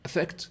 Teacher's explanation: Now, when we say these quickly, affect, they sound exactly the same. So you have a schwa at the beginning